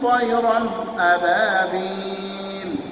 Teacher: এখানে তয়রান, রন স্পষ্টভাবে গুন্না ছাড়া করবেন, একে বলা হয় ইজহার।